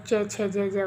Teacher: तालू पे हमारे जीभ टच होती है थोड़ी सी · तालु से च वर्ग बोला जाता है पूरा